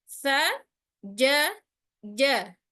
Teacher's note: Jadi tepat di tengah lidah sehingga tidak menimbulkan decak yang tidak perlu pada huruf jim.